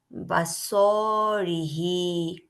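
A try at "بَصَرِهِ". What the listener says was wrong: বা স টান হয়ে গেল কেন? হয় নাই। বাসরিহি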